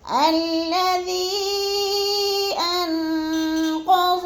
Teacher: الذی کو ہم نے کھینچنا ہے کیونکہ ادھر مد منفصل ہے، حروف مدہ کے بعد حمزہ دوسرے کلمے میں آ گیا ہے، مد منفصل ہے، 4 الفی مد ہے، 4 الف کے برابر ہم نے اس کو لمبا کر کے پڑھنا ہے۔